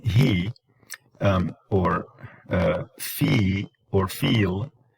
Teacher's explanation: e is high front actually the farthest to the front